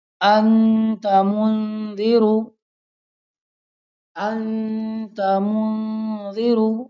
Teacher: اخفا کی مقدار 1 الف ہے